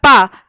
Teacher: हमारे होंठ आपस में टकराते हैं, स्पर्श करते हैं एक दूसरे का